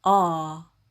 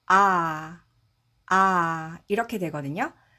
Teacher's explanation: 그래서 아 이렇게 되거든요. 그런데 같은 입 모양에서 소리를 안으로 안쪽으로 발음을 하면 어떻게 되냐면 어가 됩니다